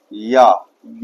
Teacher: या य का भी उच्चारण स्थान तालु